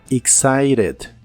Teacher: La letra T de esta palabra la puedes pronunciar como R en inglés americano